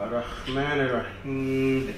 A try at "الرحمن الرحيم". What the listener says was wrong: You gotta soothe that a little bit. Okay. It's not arrah, it's rah. Ar-Rahman ar-Rahim